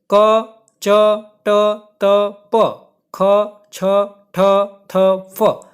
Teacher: તો જુઓ કોષ્ટકમાં ક, ચ, ટ, ત, પ, ખ, છ, ઠ, થ, ફ આ બધા વ્યંજનો છે જ્યારે તમે બોલશો અને તમારે આંગળી તમે ગળા ઉપર રાખશો તો તમને ધ્રુજારી અનુભવાશે નહીં અને આ વ્યંજનોનું ઉચ્ચારણ કરતી વખતે અવાજ થોડો કઠોર નીકળશે, એટલા માટે આ વ્યંજનોને અઘોષ વ્યંજન કહેવાય છે।